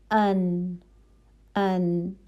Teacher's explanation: نون میں بھی آواز تھوڑی چل رہی ہے. ٹھیک ہے، نہ بہت زیادہ چل رہی ہے نہ رک رہی ہے فوراً، تو درمیان کا چل رہی ہے. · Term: توسط